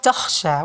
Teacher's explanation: there should be air produced, because this is Kha and the Kha is including air